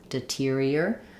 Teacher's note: We have secondary stress here on this tier syllable. So we have a clear ear vowel and we use an aspirated T rather than a flap. Deterior. It's like the word interior or exterior.